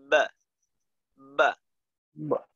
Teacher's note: তো দেখেন আমি যখন বা উচ্চারণ করব, আমরা বা, বার মাখরাজ কি দুই ঠোঁট থেকে বা উচ্চারিত হয়। তো দেখেন বা উচ্চারণের জন্য প্রথমে আমরা দুই ঠোঁট মিলাই, কিন্তু উচ্চারণটা যখন বের হয় তখন কি আমাদের ঠোঁটটা এক থাকে? ঠোঁটটা কিন্তু পৃথক হয়ে যায়।